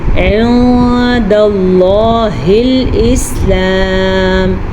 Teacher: لفظ اللہ کو پر پڑھیں گے کیونکہ لفظ اللہ سے پیچھے والے حرف پہ زبر ہے